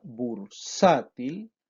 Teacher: Y acá usted puede verlo a través de los ejemplos. En la palabra bursátil, las sílabas bur y til tienen menor intensidad que la sílaba sa. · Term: sílabas átonas